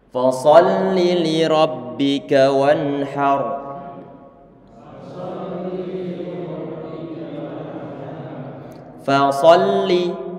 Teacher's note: Fasholli li rabbika wanhar. Fasholli, fa ini dibaca tipis karena huruf fa dia termasuk huruf istifal. Fa termasuk huruf istifal.